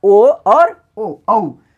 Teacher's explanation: ओ औ कंठ ओष्ठ यानी कंठ और ओष्ठ के सहयोग से होता है।